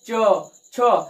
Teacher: यानी जब हम इन्हें बोलते समय, आप बोलिए, खुद बोल के देखिए, च, छ, तो आपकी जीभ कहां जाके टच हो रही है, आपके तालु पे टच हो रही है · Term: तालव्य वर्ण